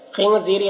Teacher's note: خنزیری، خاء کو پر پڑھیں گے حروف مستعلیہ میں سے۔ نون میں اخفا ہو رہا، نون کے بعد کو ناک میں چھپا کر پڑھیں گے۔ زی، یہاں پر یا مدہ ہے سے ایک الف کے برابر کھینچیں گے، را کو باریک پڑھیں گے۔